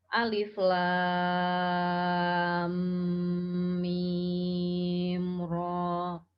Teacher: ro-nya di sini dibaca 2 harokat tanpa imbuhan hamzah. Jadi dibacanya alif lam mim ro.